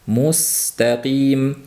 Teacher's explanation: Mustaqim sinni shu sirg'aluvchi sifati o'sha yerda ham amal qilishligi lozim.